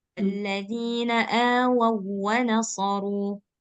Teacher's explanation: Nah, ini dia waw sukun. Jadi dia nggak dengung.